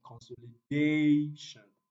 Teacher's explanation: so the stress falls on day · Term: primary stress